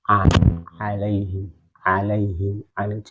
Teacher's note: istifal, yaitu pangkal lidah tidak naik ke langit-langit atas. Jadi lidahnya tetap terhampar.